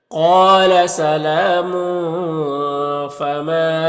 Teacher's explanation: تنوین کے بعد فا ہے حروف اخفا میں سے، تو اخفا ہوگا، اس کی آواز کو ناک میں چھپا کر پڑھیں گے